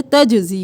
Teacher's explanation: जीम को साकिन नहीं रखना, यह हरूफ कलकला में से है